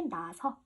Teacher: 어와 어가 만났기 때문에 하나를 탈락시켜줘서 이렇게 나서 하나만 남겨준다라는 겁니다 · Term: 동음 탈락